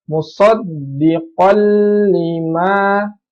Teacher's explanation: Jadi tanwinnya melebur ke lam, jadi tidak perlu ditahan, dia langsung masuk ke lam tasdid ya. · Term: idgham bila gunah